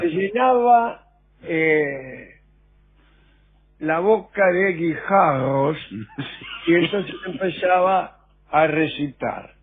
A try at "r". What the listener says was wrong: Usted tampoco pronuncia bien la R, me parece. Que no pronuncia bien la R usted, como Demóstenes.